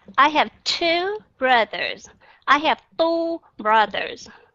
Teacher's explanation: trong tiếng Anh nó khác với âm t trong tiếng Việt âm th cái điều mà các bạn cần thiết nhất là phải để chót lưỡi giữa hai hàm răng